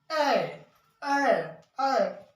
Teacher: अब संयुक्त स्वर तो ये तो हो गया, लेकिन संयुक्त स्वर में जैसे एड़ी का है, ऐना का है, ओखली को है, औरत क्यों है, तो जैसे इसको बोलते हैं ए ए ए, तो जीभ तालू को टच करता है, ए बोल के देखिएगा, जीभ को, जीभ ऊपर जाता है, तालू में टच होता है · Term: तालव्य